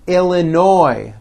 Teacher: Illinois the final s is silent